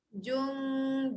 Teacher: Okey, kena dengungkan sebab apa? Dekat situ nun dengan dal, hujung lidah naikkan ke gusi atas